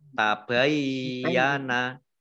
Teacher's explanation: Matabayyana mim fathah alif mat tabi'i panjang 2 harokat. Ya-nya dibaca double, ada tasdidnya.